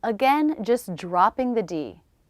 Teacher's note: Again, just dropping the D. K sound, schwa, next word. Could we? Saying it with a D when the next word begins with a vowel or diphthong.